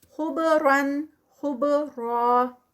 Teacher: با آ گئی ہے نا تو با کا یہاں پہ کلکلا ہوگا. خبرن، خبرا، را اسٹاپ پہ بھی ہیوی اور 2 کاؤنٹس. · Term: با کا کلکلا